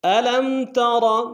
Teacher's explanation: لم میں میم ساکن ہے، غنہ نہیں ہوگا